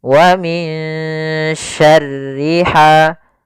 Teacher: ada bacaan Ikhfa yaitu suara Nun disamarkan kembali kepada huruf syin